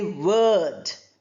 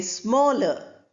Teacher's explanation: The R is not articulated, the R is not pronounced.